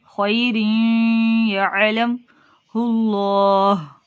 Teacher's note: خیر یعلم اللہ، ہا ساکن کی آواز، وقف کی صورت میں ہا کو ساکن کر دیا تو سینے سے اس کی خوب اچھے طریقے سے آواز نکالیے